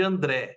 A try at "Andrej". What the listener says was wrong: Então, Andrei, aquele J no final tem som de I em esloveno, né? Mas então você simplificou, você falou André, porque a maioria das pessoas fala André ou alguma outra coisa.